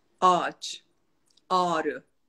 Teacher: o ğ den önceki Ünlü'yü uzatarak söylüyorsun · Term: A uzatılıyor